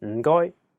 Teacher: the first character is in a very low tone fourth tone